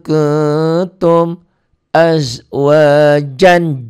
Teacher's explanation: N-nya berubah jadi N tambah G jadi eng. Kenapa? Karena tanwin ini ketemu sa. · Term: ikhfa